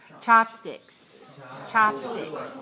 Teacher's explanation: 2, 1. 2 syllables, stress the first.